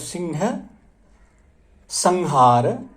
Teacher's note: माने कवर्ग के पंचम वर्ण की तरह हम उच्चारण करते हैं। सिंह, संहार, ये पंचम वर्ण की तरह से है, ये उच्चारण है।